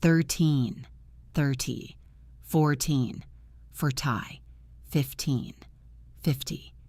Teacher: Hear that rhythm? It is a drum beat. The teen is heavy. The ty is light. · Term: stress